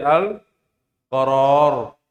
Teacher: Berubah menjadi Al-Qarar. Ra-nya berubah menjadi sukun.